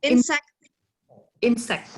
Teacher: the compound noun with the stress on the first syllable